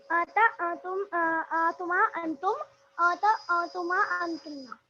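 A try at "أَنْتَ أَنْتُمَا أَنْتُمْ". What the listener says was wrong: अंता है, अंता, ठीक है, अंता अंतुमा अंतुम, नून आ रहा है, अंता अंतुमा अंतुम, अंति अंतुमा अंतुम, ठीक है,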